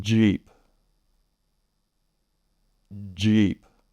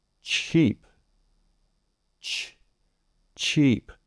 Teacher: There is a release of some air to allow more airflow through, but not the heavy and explosive release like we have with the CH. · we have more of an explosion with the CH and no voicing. If you touch your throat as you're saying those, you should not feel a vibration. · The CH sound, you stop the airflow and then release it quickly to give that burst, not with the J. The J is more of a relaxed sound.